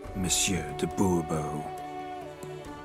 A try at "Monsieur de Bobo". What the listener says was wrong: The emphasis falls on the last syllable. Bobo?